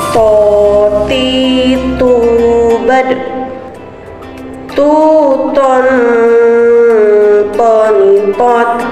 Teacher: Menyentuhkan ujung lisan dengan tempat tumbuhnya dua gigi seri bagian atas.